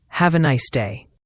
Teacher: Have a often blends to have a. The nice ends with a clear S sound, not a Z. And day has that long A sound like in play.